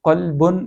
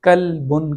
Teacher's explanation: قوف جس کے اوپر نقطے ہیں اس کو موٹا پڑھا جاتا ہے، جبکہ کاف کو باریک پڑھا جاتا ہے